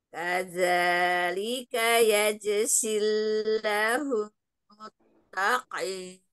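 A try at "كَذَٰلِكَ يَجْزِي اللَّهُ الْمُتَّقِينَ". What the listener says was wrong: Lam jalalahnya panjang Umi ya.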